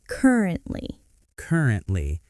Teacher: Three syllables, stress on the first.